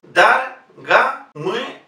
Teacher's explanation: En todas las palabras rusas donde se incluya la letra O, si esta O forma parte de una sílaba que no es la sílaba tónica, en ese caso pronunciamos A